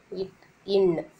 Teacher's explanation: இட் இன் நாவின் நுனி அன்னத்தின் நுனியை பொருந்துவதால் இட்டு ன்னு பிறக்கிறது